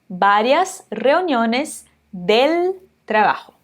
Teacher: quando a gente está falando de várias reuniones, esse V do várias vai ter som de B